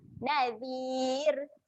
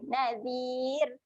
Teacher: Bila ya mat ada sebelum ra mati, ra tu menjadi nipis.